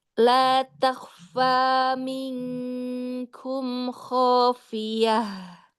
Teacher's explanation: Abad ini dia yang paling jauh dari makhraj nun. Jadi dibacanya bukan samar, bukan minkum tapi langsung ke NG-nya.